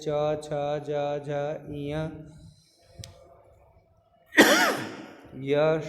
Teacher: तालव्य, इसका उच्चारण स्थान ऊपर 2, इनका उच्चारण स्थान तालु के द्वारा होता है